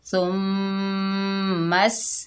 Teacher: सीन जो है सख्ती और सीटी वाला हरूफ है। सुम्मस, ता के ऊपर ज़बर बगैर खींचे पढ़ेंगे ता।